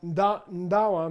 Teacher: it's not only not a D sound it's a prenasal D sound